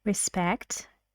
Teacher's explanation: a little bit of rising intonation